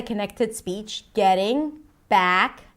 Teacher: Getting back up, notice again the connected speech, getting back, as in cat, up, right? But the k of back becomes the beginning of the word up. Getting back up.